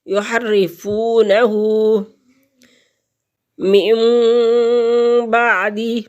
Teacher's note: نون ساکن نون تنوین کے بعد با آ جائے تو یہ چھوٹی میم بھی ہو تو اس نون ساکن اور نون تنوین کو میم میں بدل دیں گے